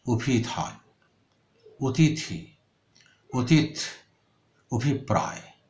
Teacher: স্বরে অ বিকৃত হয়ে ওতে পরিণত হয়, বিশেষ করে যখন হ্রস্ব ই, হ্রস্ব উ এই ধ্বনিগুলো পরে থাকে, তার আগে স্বরে অ থাকে, তখন স্বরে অ ওতে পরিণত হয়।